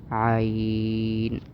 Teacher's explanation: عین، یہ اب بالکل نرمی سے، آرام سے عین حروف حلقی ہے، یعنی گلے کے درمیان سے ادا ہوتا ہے